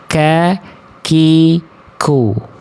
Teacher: Keluar nafas sedikit dia, ada percikan nafasnya. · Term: kaf